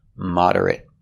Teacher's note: this time it's not a verb. Moderate with a short I sound moderate.